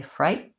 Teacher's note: Vowel is I diphthong, frighten, and then we tend to go right from a stop T, fright. So I don't release it. I don't say fright.